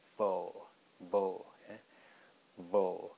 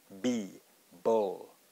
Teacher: with the B, our lips are touching, coming together.